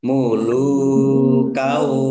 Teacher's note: Fathah tanwin bertemu dengan huruf wau. Idgham bighunah masuk dengan mendengung. yaitu mendengung wau ditahan waunya ditahan biar tampak dengungannya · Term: idgham bi gunnah